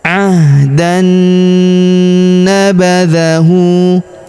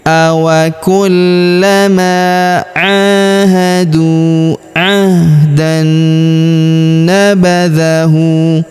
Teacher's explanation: Awa kullama ahadu a tanwin an huruf dan bertemu huruf na berharakat tasdid maka tanwin annya langsung melebur masuk ke huruf na yang berharakat tasydid. Kita tahan dan kita tekan serta kita dengungkan dua sampai harakat.